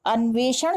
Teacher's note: जब हम अन्वेषण शब्द का उच्चारण करते हैं तो मूर्धन्य श का उच्चारण, जीभ हमारी घूम जाती है